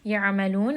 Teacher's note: ayn again is going to be from the middle of the throat. Give it a little bit of that strangulation sound. Ya'malun, and then we end here on a 4-count mad.